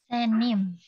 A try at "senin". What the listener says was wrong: Iya, senin. Pakai N ya.